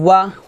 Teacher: ওয়া দুই ঠোঁট গোল করে ওয়াও জবর ওয়া উচ্চারণ করবেন